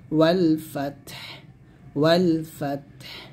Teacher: ওয়াওকে লামকে ধরবে, ওয়াও লাম জবর ওয়াল, ফাত আজবর ফাত, ওয়াল ফাত হা পেশ হু, ওয়াল ফাত হু আছে এখানে, যদি থামেন তাহলে হাটা সাকিন হয়ে যাবে, তাহলে বলতে হবে ইযা জাআ নাসরুল্লাহি ওয়াল ফাত। এখানে তাটা সাকিন হবে, হাটা সাকিন হবে, দুটোই হামস হবে, বাতাস বের হবে।